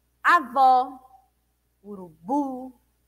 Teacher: todas essas palavras a última sílaba é a sílaba dita com maior intensidade é a sílaba tônica da palavra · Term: oxítona